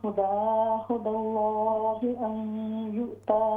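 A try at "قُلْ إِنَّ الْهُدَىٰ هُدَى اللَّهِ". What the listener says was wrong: कुल इन्नल हुदा हुदल्लाहि, लाम को मोटा कीजिए।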